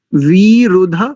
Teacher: वकार में इकार दीर्घ है और रेफ में उकार ह्रस्व है